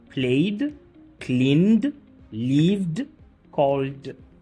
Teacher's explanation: Le ed a le son de d lorsque le verbe se termine par un son voisé tel que p, g, v, m, n, l, r, y.